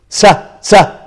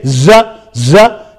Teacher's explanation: The sa is voiceless, the za is voiced.